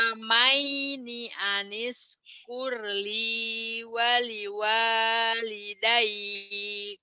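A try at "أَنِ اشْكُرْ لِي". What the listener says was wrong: Sini nggak keluar tuh. Anish kurli wali walidaik. Shinnya coba. Shinnya keluarin ya di mic satu nih.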